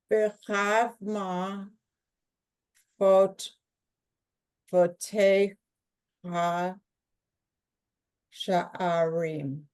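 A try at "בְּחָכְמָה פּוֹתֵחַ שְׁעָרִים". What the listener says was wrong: Do you see this is the kamat katan, right? So this is an O sound. Remember, we have this exception to the rule.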